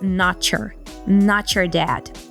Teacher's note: so the te turns into flap te but but um and the combination of letters t plus y gives us the CH sound